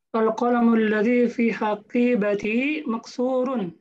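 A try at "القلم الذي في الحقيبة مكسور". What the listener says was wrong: Betul.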